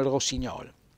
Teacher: quindi mi raccomando la o chiusa